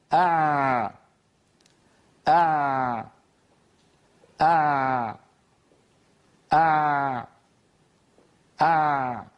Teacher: آ آ آ آ آ، هكذا صوت العين. هو فيه شيء من الامتداد، ولكنه امتداد في مجرى ضيق · الجريان الجزئي للصوت عند نطق العين بسبب رجوع لسان المزمار إلى الخلف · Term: حرف العين